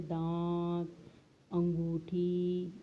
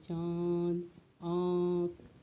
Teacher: इनका उच्चारण करते समय नाक और मुख दोनों से हवा बाहर आती है। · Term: अनुनासिक